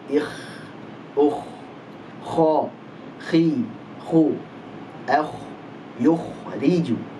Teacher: Huruf kha ada hamasnya, ada aliran nafasnya.